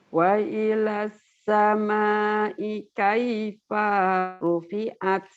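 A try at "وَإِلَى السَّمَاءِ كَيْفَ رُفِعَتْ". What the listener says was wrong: Kenapa paknya panjang? Maknya kan ada alis panjang malahan. Udah bener cuman tinggal panjang pendeknya penempatan. Wa ilas sama kaifa rufi'at.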